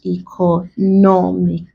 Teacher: I give an example: economic, ending with ic. So we stress the penultimate or second to last syllable.